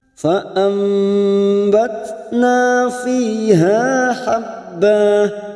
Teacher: Cara membacanya yaitu dengan membalikkan nun atau tanwin menjadi mim. Di sini ada tanda mim kecil, yaitu membalikkan bunyi nun sukun, kita balikkan menjadi mim. · Di sini ada tanda mim kecil, yaitu membalikkan bunyi nun sukun, kita balikkan menjadi mim. dengan merapatkan bibir tanpa menekan disertai dengung selama 3 harokat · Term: iqlab